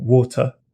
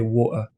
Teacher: I'll sometimes drop the T sound